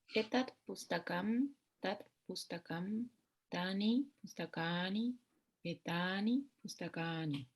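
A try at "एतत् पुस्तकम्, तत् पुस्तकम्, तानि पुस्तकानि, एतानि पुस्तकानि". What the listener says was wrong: Samyak. Uttam.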